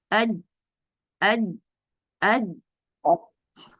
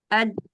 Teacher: जबान जब तालु से टकराएगी तो उसके बाद कोई आवाज सुनाई नहीं देगी, यानी आवाज रुक जाएगी। अज, ये क्या हुआ, मैंने क्या किया, मैंने पढ़ा अज और जबान मेरी रुक गई, यानी मखरज मेरा बंद हो गया। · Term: शिद्दा